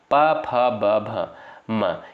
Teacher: प, फ, ब, भ, म इसका उच्चारण हो जाएगा आपका ओष्ठ से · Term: प वर्ग